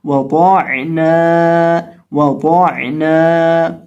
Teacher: اور واو جو ہے اس کو ہم ہونٹوں کو گول کر کے پڑھتے ہیں، تو واو کو پڑھتے وقت ہم یہاں ہونٹوں کو گول کر کے پڑھیں گے اور قاد کو موٹا کر کے پڑھیں گے کیونکہ حروف مستعلیہ میں سے ہے، اور عین کو حلق کے درمیان سے ادا کریں گے اور نون کو ایک الف کے برابر لمبا کریں گے، کھینچیں گے کیونکہ اس کے ساتھ الف ہے